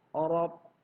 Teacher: Huruf ra berharokat fathah, maka dia harus dibaca tebal atau tarkhim.